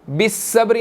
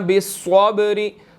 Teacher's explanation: स्वाद यहाँ पर जो है वो बिस्सब्री नहीं पढ़ना, बिस्सब्री, स्वाद मोटा हमने अदा करना है क्योंकि यहाँ पर वो मोटा है। आगे बा साकिन है, यहाँ पर हमने कलकला करना है, ठीक है जी।